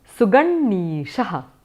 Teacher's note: You have to do a doubling of the anunasika sound. So yatha you have got pratyang atma, which will become pratyangatma.